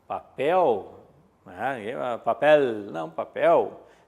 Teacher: No final, o L, na linguagem coloquial, o L assume um som de U.